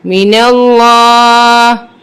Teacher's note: میم زیر می، نون لام زبر نل، لام کھڑا زبر لا. اب یہاں پہ لام بھی مشدد ہے، اس کو سختی کے ساتھ پڑھیں گے اور پر پڑھیں گے کیونکہ اس سے پہلے زبر ہے.